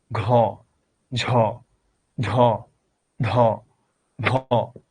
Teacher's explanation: ঘ, ঝ, ঝ, ধ, ভ, এটা হলো মহাপ্রাণ। যেখানে বাতাসের প্রেসার বেশি থাকে ওটাকে বলে মহাপ্রাণ। এবং মহাপ্রাণের একটা কমন ক্যারেক্টারিস্টিক হচ্ছে মহাপ্রাণের সঙ্গে হ আছে, হ লাগাইলেই এটা মহাপ্রাণ হয়ে যায়।